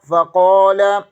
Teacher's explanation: قاف زبر کے آگے الف مدہ ہے، اسے ایک الف کے برابر کھینچیں گے۔ لام زبر، لام کے اوپر زبر ہے، دونوں لام پر، ان کو بریک پڑھیں گے۔